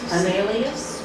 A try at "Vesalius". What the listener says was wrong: We say Vesalius in the Latin. We don't, you're saying French, Vesal, but we say Vesalius.